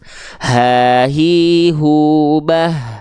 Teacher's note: H besar dilafalkan pita suaranya membuka sehingga dia keluar nafas juga sifatnya hams